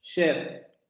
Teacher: Y ya la abertura vocálica está un poco más abierta que en la I.